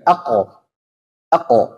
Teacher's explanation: suaranya tertahan dia nah ini namanya syiddah